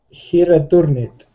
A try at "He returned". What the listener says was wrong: Yeah, but we don't do the id ending on this one. We say he returned. Returned. Earned. Like earned.